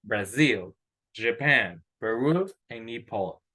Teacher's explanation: aquí la mayor fuerza de voz está en la segunda sílaba